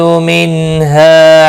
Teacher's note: نون ساکن کے بعد حرف حلقی کا ہا ہے، اظہار حلقی ہوگا، غنہ نہیں کریں گے۔ ہا الف مدہ بھی ہے، 1 الف کے برابر کھینچ کر پڑھیں گے۔